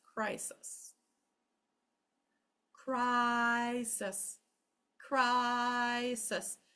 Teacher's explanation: The first syllable lasts the longest, so you only get one S, okay?